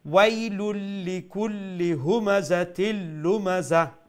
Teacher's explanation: ওয়াই হারকাতর সাউন্ডটারে আর একটু খাটো রাখবা